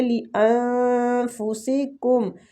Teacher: اخفاء حقیقی ہو رہا ہے، نون کو چھپائیں گے